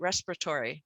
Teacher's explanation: who would guess to drop out a vowel completely with a syncopated schwa